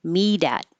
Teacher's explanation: The T changes to a D. Meet at. And I guess I should make this T kind of connect to the TH because you're not going to hear it.